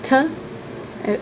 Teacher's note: This is very similar to the T that we have in English, except it's pronounced farther back in your mouth. So if you pronounce it ta, you'd have to slide your tongue back a little bit in order to make the sound. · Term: retroflexed